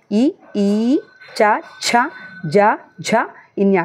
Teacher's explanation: తాలువు అంటే దౌడ భాగంలో పుట్టే అక్షరాన్ని మనం తాళవ్యాలు అంటాం